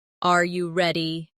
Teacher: the pitch of their voice goes up at the end. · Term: intonation